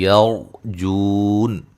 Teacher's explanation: रा को मोटा अदा करेंगे, रा साकिन से पहले ज़बर है, ता को बारीक पढ़ेंगे, जू व मद है।